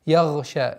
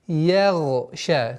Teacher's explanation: Так как гайн твердый звук, она поглощает мягкость звука я и получается я, ягша, что является ошибкой. И поэтому я отдельно, отдельно.